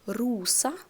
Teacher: Rosa, again, stress on O. A is a weak vowel in the end.